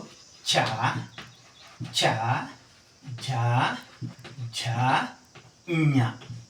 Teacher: ನಾಲಿಗೆಯನ್ನ ಹಲ್ಲಿನ ಮೇಲ್ಭಾಗಕ್ಕೆ ಒತ್ತೀವಿ. ಒತ್ತಿ ಚ ವರ್ಗದ ಅಥವಾ ಗುಂಪಿನ ಅಕ್ಷರಗಳನ್ನ ನಾವು ಉಚ್ಚಾರ ಮಾಡ್ತೀವಿ. ಇವುಗಳನ್ನ ತಾಲವ್ಯ ಧ್ವನಿಗಳು ಅಂತ ಕರಿತೀವಿ.